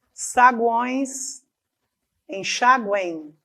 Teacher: esse M desse enxaguem terminou em I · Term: tritongos nasais